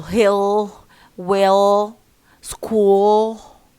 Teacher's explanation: dark la, and this comes at the end of words and after vowels. For example, hill, well, school.